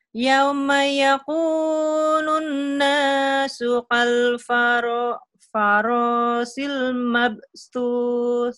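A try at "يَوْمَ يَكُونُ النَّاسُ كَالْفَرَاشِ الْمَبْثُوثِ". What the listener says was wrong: Cuman tinggal hurufnya aja. Ya, K-nya masih kayak ketakutan ya. Yauma yakunun nasu kal farasil. Ini shin gede. Kal farasil mabstus.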